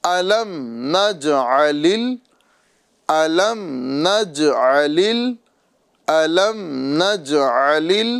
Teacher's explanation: جیم میں قلقلہ کریں گے اور لام کو اگلے لام سے ملا کر اس طرح پڑھیں گے